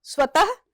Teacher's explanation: ह की ध्वनि अंत में आ रही है लेकिन पूरी तरह से नहीं आ रही है। तो यह वस्तुतः ह नहीं लिखेंगे। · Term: विसर्ग